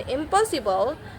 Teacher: the n change to m since both m and p are made with the lips. It just simpler to say impossible than impossible.